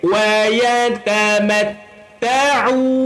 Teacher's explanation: Walaupun saya tutup hidung, jelas bunyi dia. Itulah ain.